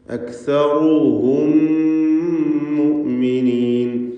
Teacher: രണ്ട് മീമുകളെയും ഷദ്ദുള്ള ഒറ്റ മീമാക്കി ലയിപ്പിച്ച് മണിച്ചുകൊണ്ട് ഉച്ചരിക്കണം. സാക്കിനത്തായ മീമിനെ ശേഷമുള്ള മീമിൽ ലയിപ്പിക്കുക. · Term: ഇദ്ഗാം ശഫവി